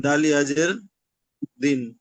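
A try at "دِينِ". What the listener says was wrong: দাল ইয়াজের দি, নুন সাকিন হয়ে যাবে দিন, এরকম বলতে হবে। দাল ইয়াজের দিন হয় না, দাল ইয়াজের দি হয়।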